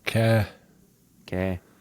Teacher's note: just put the H on the end, get rid of the R